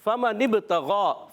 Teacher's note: فا کا مخرج ہے اوپر والے دانتوں کے کنارے نیچے والے ہونٹ کا تر حصہ، یہ فا کا مخرج ہے۔